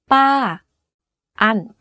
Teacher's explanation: fall down at the end of the syllable here's an example you can hear from my voice that my pitch went up and then down very slightly · focus on pitching your voice to go slightly up first and then to fall down at the end of the syllable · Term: falling tone